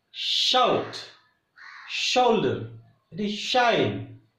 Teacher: Here tip of the tongue and middle of the tongue touches near to the hard palate, and there is a small vent This part is hard palate and tip of the tongue and middle of the tongue. When major part of our tongue comes near to the hard palate, but it doesn't touch, and air passes through that small vent, small opening, and we get sound sh and s.